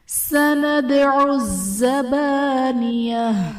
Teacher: سندعو میں دال حرف قلقلہ ساکن ہے، تو یہاں پر قلقلہ خوب ظاہر کریں گے۔